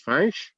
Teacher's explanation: Léonards nasalisent beaucoup, donc ils disent Finch.